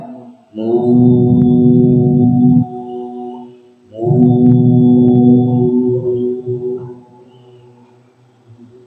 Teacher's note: ketika kita baca huruf mimnya berharakat itu tidak masuk hidung kita tutup hidung kita begitu ngih supaya mengecek apakah masuk hidung